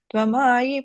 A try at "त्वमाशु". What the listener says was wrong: And the fourth line, first word, Tomashu, Sha sound.